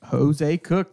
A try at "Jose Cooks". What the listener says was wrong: Hey, it's Cooks with an S, man. You said Cook. Look, I listen for the S. leaves the S off.